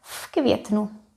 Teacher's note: K is voiceless. It affects V and it becomes F.